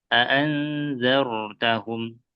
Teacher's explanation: Ro sukun yang sebelumnya fathah yang ditebalkan.